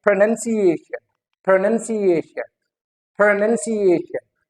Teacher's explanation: एक तो stress नन पे आ रहा है and the other one is ए पे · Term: सेकेंडरी स्ट्रेस